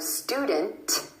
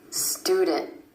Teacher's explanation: the NT at the end of words, you're going to hear a held T for that cluster